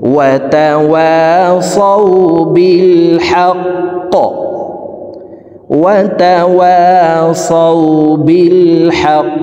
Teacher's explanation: কফ কলকলার হরফ উপরের দিকে ধাবিত করে ধাক্কা দিয়ে কফকে সাকিন করে ফেলবো